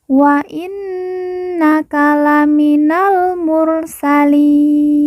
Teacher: Wa innaka laminal mursalin. Kemudian li kita baca panjang 2, 4 atau 6 harokat karena di depannya terdapat huruf ya sukun atau ya mati sebelum huruf pemberhentian, yaitu huruf nun.